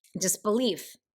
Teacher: So you have 2 little syllables, but leaf is where the emphasis of the word is. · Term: anapest